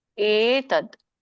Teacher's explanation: ಇಲ್ಲಿ ಏ ಯ ಬರೋದಿಲ್ಲ, ಇಲ್ಲಿ ಏ ಇದೆ. ಇದು ಗಂಟ್ಲಿಂದ ಬರುವಂಥದ್ದು. ಏತದ್ ನೋಡಿ, ಅದು ಸ್ವಲ್ಪ ಉಚ್ಚಾರಣೆ ಬೇರೆ ಆಗುತ್ತೆ ನಾಲ್ಗೆ.